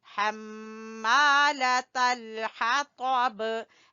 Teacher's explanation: हा को गले के दरमियान से तो को पुर पढ़ेंगे और बा के ऊपर कलकला करेंगे